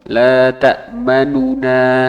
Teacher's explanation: kadar nunnya itu sepertiga dari aslinya